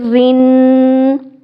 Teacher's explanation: را کے نیچے زیر ہے تو را کو باریک ادا کریں گے